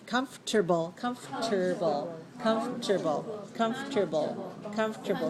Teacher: so we don't even say the the second syllable